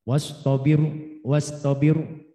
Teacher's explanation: roknya sukun tapi sebelum roknya kasro. Wastobiru itu tarkik. Iya. Ya, kemudian rok mati sebab wakaf dan didahului oleh ya mati.